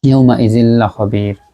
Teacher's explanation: তানবিন বা নুন সাকিনের মাখরাজটা পরের ইদগামের মাখরাজের সাথে মিলে যাচ্ছে, ইদগাম মানে মিলানো, তো মিলে গেছে কিন্তু উইদাউট গুণনা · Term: ইদগামে বেলা গুণনা